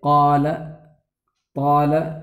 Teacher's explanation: ان حروف کو ادا کرتے وقت زبان کی جڑ اوپر کے تالو کی طرف اٹھ جائے، جس کی وجہ سے یہ حروف پر ہو جاویں، جیسے قال، طال کا قاف اور طا۔ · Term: استعلاء